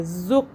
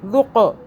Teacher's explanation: ذال کو آپ نے زبان ہلکی سے باہر کر کے اور نرمی سے ادا کرنا ہے، اس میں سیٹی کی آواز نہیں آنی چاہیے، ذق ایسے نہیں کرنا آپ نے، ذق۔